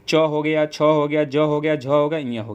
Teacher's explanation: जिन वर्णों का उच्चारण करते समय जीभ का मध्य भाग हमारे तालु को स्पर्श करता है उन्हें तालव्य व्यंजन कहते हैं